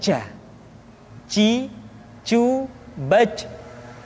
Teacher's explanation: Kesalahan yang sering muncul ketika mengucapkan huruf ja adalah mengalirnya nafas. Ja, ada nafas yang mengalir.